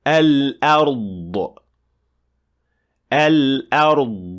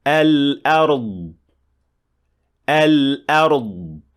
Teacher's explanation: that last bit of the sound is the qalqala or the releasing of air, which is not supposed to happen